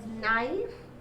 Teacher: K and N letters are underlined, but K is silent and you have the phoneme N